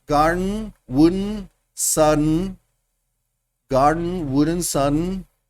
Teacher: Si ven cómo el nasal plosión desaparece